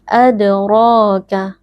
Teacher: Adra huruf Dal sukun posisinya ada di tengah-tengah kata merupakan bacaan Qalqalah Sugra bunyi Dal sukunnya dipantulkan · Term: huruf tebal